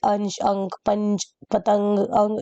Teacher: वो होते हैं जिनका उच्चारण करते समय नाक से ज्यादा और मुंह से कम सास निकलती है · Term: अनुस्वार